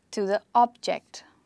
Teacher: but an object that you can see or touch is a noun and it's stressed on the first syllable